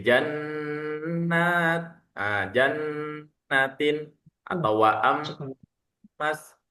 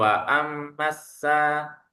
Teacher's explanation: Jadi dengungnya ditahan selama 3 harokat. Jadi jannat, jannatin atau wa'am mas, bukan wa'am masa, terlalu pendek ya dengungnya. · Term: gunnah